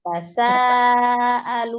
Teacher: hukumnya adalah mad wajib muttasil, panjangnya 4 atau 5.